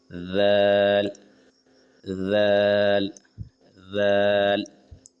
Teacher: زبان کی نوک تھوڑی سی اوپر کے سامنے کے دانتوں سے لگاتے ہوئے ذال ادا کریں گے